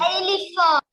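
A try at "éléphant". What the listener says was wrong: No, A not L-E.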